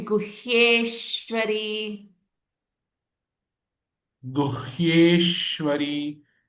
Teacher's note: Hye is the Dirgham followed by Samyuktakshara Shwa. So it becomes a little longer Hye, and the Sh will have a little bit of hold or stress on it.